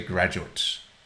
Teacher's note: If it is a noun, then you say graduate, stressing the first syllable. But the verb is graduate.